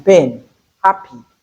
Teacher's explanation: The tap can represent the P sound as a bilabial the voiceless bilabial sound as in pain happy